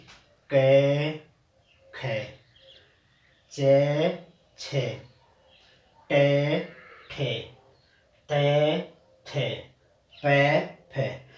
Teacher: इनका उच्चारण करते समय किसी भी प्रकार का कंपन पैदा नहीं हुआ, इसीलिए इनको अघोष कहा जाता है, यानी किसी प्रकार का घोष नहीं होता उच्चारण में।